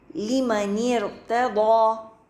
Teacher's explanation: حمزۃ الوصل بھی ڈراپ ہو گیا اور جو اس کا کسرہ تھا وہ بھی